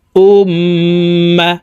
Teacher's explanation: হরকতের বামে মিমের উপরে তাসদিদ আছে এই কারণে হরকত ওয়ালা হামজাটি তাশদিদ ওয়ালা মিমের সাথে নাকের বাঁশি থেকে তিন সেকেন্ড পরিমাণ গুন্না করে ধরে রাখবো